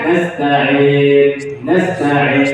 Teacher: mencampur bunyinya dengan bunyi Alif kerana bahagian Tengah lidah tidak terangkat dengan kadar yang sepatutnya ketika menyebutnya seperti n n Nain iaka nauduak n kita sebut